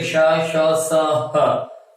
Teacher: इन 4 का जब आप उच्चारण करते हैं तो हमारी प्राण वायु जो बाहर निकलेगी वो अत्यधिक रगड़ खाकर बाहर निकलती है, घर्षण से बाहर निकलती है, और उसकी वजह से हमारी प्राण वायु उष्म यानी गर्म हो जाती है। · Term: उष्म वर्ण